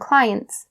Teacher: The T sound, you have to stop the T right there